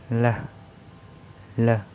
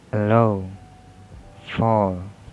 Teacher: that is voice alveolar lateral